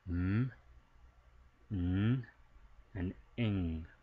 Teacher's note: We have nasal sounds, so these are actually being produced somewhat with our nasal cavity, meaning some air is actually going through our nose, escaping through our nose when we're producing these sounds